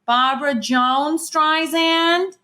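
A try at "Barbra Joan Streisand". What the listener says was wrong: It still kind of sounds like Jones. I know it's because you're saying Joan and then Streisand, but I hear Joan. To Barbra Joan.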